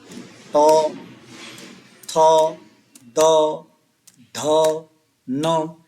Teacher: इन पांचों में से भी दो अघोष हो गए तीन सघोष हो गए